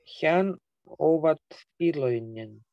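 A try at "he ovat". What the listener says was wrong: Нет, только не хян, а хэ овод. Хэ овод, хян вот он. Или можно запомнить, им бы только найти повод. Хе-овод, хе-овод.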